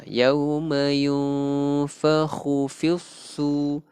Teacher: Nun mati bertemu fa, hukum dia ikhfa hakiki. So kita bacanya dengung.